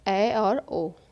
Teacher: जिन स्वरों के उच्चारण में मुख द्वार आधा बंद रहता है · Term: अर्ध समृत